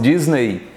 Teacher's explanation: O Disney, não é para nós aqui, para os americanos é o Disney, eles falam assim, mas nós falamos Disney. Então a sílaba tônica é no NEI e a vogal é o E e o Y é uma semivogal. Ou o Y pode agir como ditongo, como I.